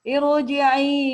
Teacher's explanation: dan dia pun harus dibaca tebal ro-nya